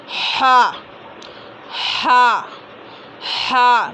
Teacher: बड़ी हा, है ना, ज़्यादा हवा निकलेगी। हा दरमियानी हलक से, और हा हल्के आवाज़ में निकलेगी, हा, है ना।